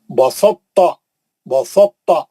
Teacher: ادغام متجانسین ناقص ہوگا کیونکہ ان کی ادائی میں تا کا اطباق کا مطلب تا کا موٹا پن باقی رکھ کر ادغام کیا جاتا ہے